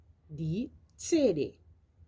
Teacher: B, das Buch. C, la lettre C combine la lettre T et la lettre S et ça donne un Ts